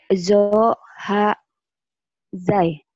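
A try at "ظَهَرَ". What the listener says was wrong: Bukan zai, ini madal. Kalau zai ya yang bawah nih, zai nih, yang ini nih. Tapi sudah berbaris jadi berubah. Zo ha za, zo ha za.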